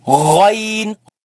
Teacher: In the mouth is when you gargle, there's a gargling sound. From the top part of the throat where kha comes from, but kha is dry. But this one is a little wet.